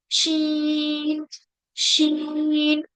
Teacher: जबान का जो बीच का हिस्सा है वो भी तालू की तरफ उठेगा